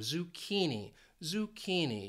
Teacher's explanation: this word has three syllables and the stress is on that second syllable that key and that's where it confuses people because of this